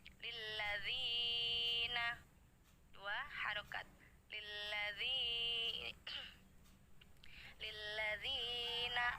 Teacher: Mad Thobi'i panjangnya dua harokat